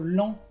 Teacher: la T no se pronuncia